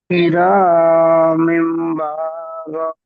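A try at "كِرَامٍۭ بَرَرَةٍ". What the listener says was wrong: কিরা, কিরা হবে না, কিরা হবে না। আমরা পড়েছি রয়ের উপরে যদি জাবার অথবা পেশ হয়, রটি পুর করে পড়তে হয়। তাহলে কেমন হবে রয়ের উপরে জাবার? জি, কি র।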